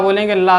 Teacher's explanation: ल दोनों ओर से हवा निकलती हुई प्रतीत होगी। ठीक है? प्रतीत अब हवा है दिखाई तो देगी नहीं प्रतीत ही होगी। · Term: पार्श्विक व्यंजन